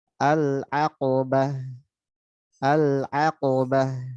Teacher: Ainnya tipis. Qafnya tebal. Ba-nya tipis. Tak marbutonya jadi ha. Dan ha-nya mesti ngalir.